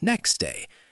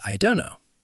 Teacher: sounds like the T in next day or I don't know often disappear entirely, not reduced, gone. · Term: elision